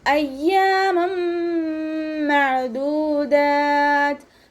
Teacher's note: തെൻവീനുള്ള നൂനിനെ മീമിലേക്ക് ലയിപ്പിച്ചിട്ട് ഒന്നയോടുകൂടി ഓതാൻ ശ്രദ്ധിക്കുക